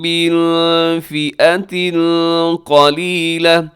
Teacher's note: من کے نون ساکن کے بعد فا ہے، یہاں بھی اخفا ہوگا